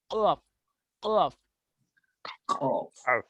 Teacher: जबान की जड़ जब कौवे के करीब से नरम तालु से लगे तो इससे कौफ जो है अदा होता है